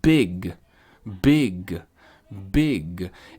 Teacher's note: Seria big, big, com aquele gui no final. Em inglês, a gente quase não pronuncia. Quer dizer, a gente pronuncia só 10 ou 15% do som do G no final. Então, ao invés de falar gui, a gente fala g.